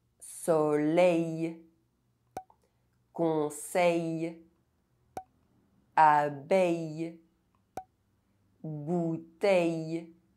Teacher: EIL and EILL are pronounced [εj]